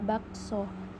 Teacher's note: direalisasikan sebagai bunyi O tengah atas belakang bundar apabila berada pada silabel terbuka, seperti pada kata bakso.